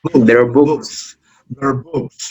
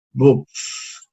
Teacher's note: Porque la K no es una consonante sonora, sino es una consonante muda. Se produce solamente con la obstrucción en la parte posterior de la lengua, de lo que llamamos el paladar blando, ¿no?